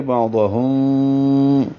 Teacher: میم ساکن کے بعد با ہے تو اخفاء شفوی کریں گے، بعضہم، ہونٹوں کو قریب لائیں گے، ملائیں گے نہیں